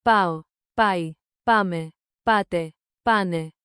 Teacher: Keep the accent on the first syllable. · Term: Stress